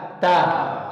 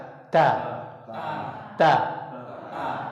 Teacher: huruf ta itu asalnya bukan di langit-langit tapi di ujung lidah bertemu dengan pangkal gigi seri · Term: makhraj huruf ta